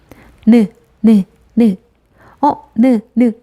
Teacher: 공기가 비강, 콧속을 통해서 나오기 때문이죠. 그럼 니은은 치조음이면서 비음, 그렇죠.